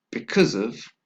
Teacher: so it's as a result of second we have because of again we have a weak sound of and again a link between the last syllable of the first word and the preposition of